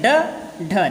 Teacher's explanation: बोलते समय स्पष्ट हो रहा है कि जीभ जो है एक बार तालू में जाकर के मिल रही है, फिर नीचे आके गिर रही है